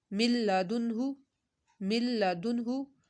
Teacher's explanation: ربیہم، مر ربیہم، مل لدنہ، مل لدنہ، اب یہ دیکھیں مل، نون ساکن کے بعد لام ہے، یہاں بھی غنہ نہیں ہوگا